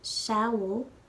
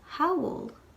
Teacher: So, sowl, when we lenite it, will become howl. A lenited S goes from making a S sound to an H sound.